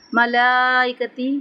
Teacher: ملائکتی یہاں پہ کھڑا زبر ہے اور اس کے اوپر مد ہے تو اس کو لمبا کریں گے 3 سے 4 حرکت